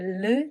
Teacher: it's not either r or l sound it's somewhere in between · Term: [ㄹ] sound